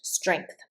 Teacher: I always say strength with a g that almost sounds like a k at the back of my throat. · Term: g sound